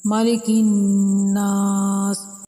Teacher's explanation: گول دائرہ اب یہ وقف کی علامت ہے، یعنی کہ یہاں پر رکنا ہے، سین کو ساکن کرنا ہے اور 3 الف کے برابر نون کو لمبا کرنا ہے